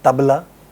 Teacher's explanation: The upper surface of the tongue is touching Upper teeth. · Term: dental sound